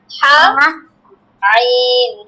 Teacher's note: হা আর আইন, দেখো গলার মাঝখান থেকে হবে